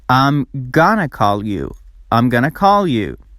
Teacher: going to is reduced as GNA